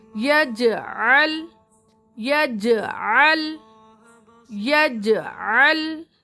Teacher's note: یج میں حرف قلقلہ ہو رہا اسی لیے مخرج کو ٹکر کھلا کر پڑھ رہی، اور عل میں نہیں ہو رہا اسی لیے وہاں پر رک جا رہی